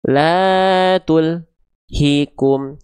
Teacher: antara al dengan hi enggak boleh ada jeda. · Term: tawasud